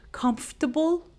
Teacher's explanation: And when we say it, we do not pronounce the R sound, as you may not hear it when I say comfortable.